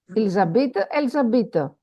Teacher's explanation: Okay, so we don't pronounce the last consonant.